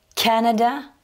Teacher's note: dans ce mot-là, Canada, j'ai insisté sur la première syllabe